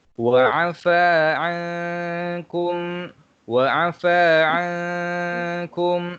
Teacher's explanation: kita kena baca dengung 2 harakat serta memasukkan sedikit pada huruf kaf ini.